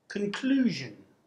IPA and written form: kənklu:ʒən (conclusion)